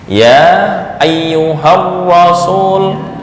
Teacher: ketika wasal alifnya menjadi hilang, tapi secara penulisan dan waqaf alif terbaca.